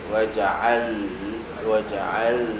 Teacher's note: lam hujung lidah pergi ke langit tapi hujung lidah kiri atau kanan sedikit jangan hujung lidah betul-betul eh kiri atau kanan sedikit wajaal wajaal